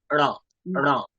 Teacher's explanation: না, আপনার জিভ, আপনি জিভ উপরে রাখুন, জিভ একদম স্ট্রেট রাখুন, উপর দিকে একদম আলটাগড়ায় তুলে দিন জিভ, তুলে দিয়ে র বলুন।